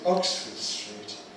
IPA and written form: ˈɒksfəd striːt (Oxford Street)